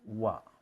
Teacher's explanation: kalau orang Arab itu bibir ketemu bibir, wa. Jarak bibir atas bawah itu ya tipis saja. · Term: huruf waw